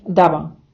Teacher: залишаючи малесеньку прощилену між губами як наприклад в слові Дава Тобто ми наче намагаємося вимовити нашу б Але не повністю змикаємо губи така Б вимовляється вре редині слова або між артиклем та іменником